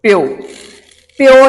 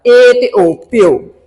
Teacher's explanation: ਸਵਰਾਂ ਦਾ ਉਚਾਰਨ ਇੱਕ ਦੂਜੇ ਨਾਲ ਇੰਨਾ ਜੁੜਿਆ ਹੋਇਆ ਵੀ ਉਹ ਇੱਕੋ ਹੀ ਲੱਗਦਾ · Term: ਸੰਧੀ ਸਵਰ